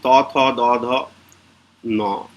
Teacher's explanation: যেখানটায় লাগছে ন বলার সময় বা ত বলার সময়, সেই সেই অংশটাকে বলা হয় দন্ত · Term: দন্তন্য